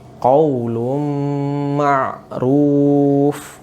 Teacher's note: Tanwinnya dimasukkan ke dalam huruf setelahnya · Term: idgham bigunnah